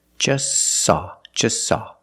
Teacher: You link the S with the S. Link them together.